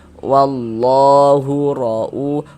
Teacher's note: huruf ra dibaca tabkhim, sudah kami jelaskan juga tadi, dibaca tebal. Ra'u, dibaca panjang.